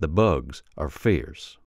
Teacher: the RS are pronounced but they're softened